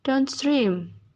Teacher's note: The primary stress is placed on the second word and the secondary stress on the first word.